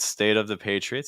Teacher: of the Patriots so what we see very commonly is that when you have a t sound that comes at the end of a word very very frequently that t is going to be held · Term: held sound